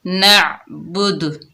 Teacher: next نون عین زبر نع، با پیش بو، نعبو، دال پیش دو، نعبدو، وقف آگے وقف نعبد، وقف کی حالت میں دال کا پیش ختم ہو جائے گا، دال ساکن ہو جائے گی اور یہاں پر ہم کلکلا کریں گے، دال کی آواز پلٹ کر واپس آئے گی